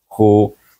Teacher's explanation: baik Kha wauitu Mak asli Kha baris depan k wau hu bertemu dengan wa maka kita baca panjang dengan mad asli